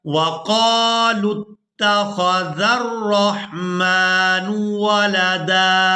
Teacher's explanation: अब यहाँ पर आप लोग ये वाव देख रहे हैं, ये वाव रस्मुल ख़त है, इसको अदा नहीं किया जाएगा। लाम को ता मुशद्दद के साथ मिलाएंगे